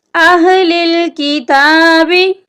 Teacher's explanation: यहाँ पर ता के ऊपर खड़ी ज़बर है। खड़ी ज़बर को हम 1 अलिफ की मिकदार के बराबर लंबा करके पढ़ते हैं।